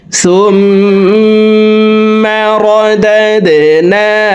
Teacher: তো এখানে দেখুন হরকতের বামে মিমের উপরে তাসদিদ আছে এই কারণে এই পেশওয়ালা সাটি তাসদিদওয়ালা মিমের সাথে 3 সেকেন্ড পরিমাণ গুন্নাহ করে পড়ব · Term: ওয়াজিব গুন্না